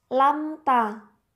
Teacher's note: Izhar Syafawi karena ada mim sukun bertemu ta dibaca jelas lamta bacaan Mad atau panjang dibaca panjang satu Alif atau dua